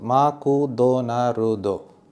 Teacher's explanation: But the Japanese find these clusters of consonants very difficult, like McDonald's. So they actually pronounce it ma-ku do na ru do.